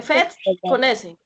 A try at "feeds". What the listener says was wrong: Feeds. Feeds. Algunas palabras que tienen doble E en inglés se pronuncia como una I. Entonces suena feeds. Feeds. Y suena la S.